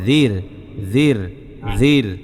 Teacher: জালটা চিকন মানে নরম হবে, জাল নরম হবে, জালও পাতলা হবে, র পাতলা হবে, দুইটাই চিকন হবে